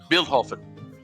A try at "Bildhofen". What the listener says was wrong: Do the D more like a T. Do the D more like a T. Bildhofen.